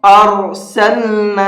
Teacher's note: ارسلنا، یہاں پر یہ را ساکن ہے اور را ساکن سے پہلے زبر ہے۔ را ساکن سے پہلے اگر زبر ہوتا ہے تو اس را کو بھی منہ بھر کے پڑھتے ہیں